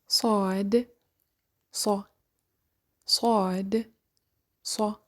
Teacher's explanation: when we pronounced sa, the tip of the tongue touches the inner edge of the 2 bottom front teeth.